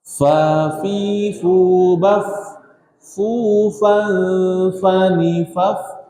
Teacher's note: Gigi seri atas ujung dengan bibir bawah bagian dalam.